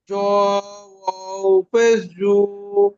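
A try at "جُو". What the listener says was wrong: আরো একটু টানেন ভাই, আরো একটু, ওয়াওটি আরো একটু টানেন।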